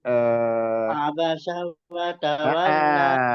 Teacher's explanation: Jangan kepanjangan, itu nggak ada. Jadi ain, ba, dan sin di situ itu semuanya nggak ada yang dipanjangkan.